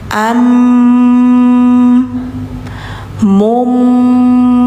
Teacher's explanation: nunnya enggak dibaca lagi langsung ke huruf langsung ke suara m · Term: iqlab